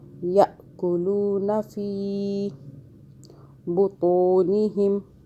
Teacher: تو کو ذرا موٹا کریں · الف کے اوپر جو ہے چھوٹی سی دال بنی ہے جزم، ادھر جھٹکے سے پڑھیں گے